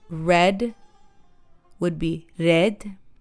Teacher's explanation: R is tapped, so red would be red.